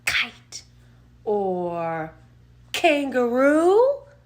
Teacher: the sound is coming from the back of our throat